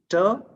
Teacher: Ter, voiceless alveolar plosive.